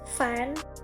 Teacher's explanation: the obstruction is made by the contact of the lower lip and the upper teeth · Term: labiodental